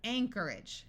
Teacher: Notice that the OR takes on a muffled sound, and AGE at the end of a word, rather than having a clear long A sound and sounding like age, tends to take on an edge sound.